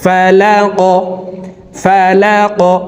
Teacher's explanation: এ কফ হরফকে উপরের দিকে ধাবিত করে ধাক্কা দিয়ে উচ্চারণ করব।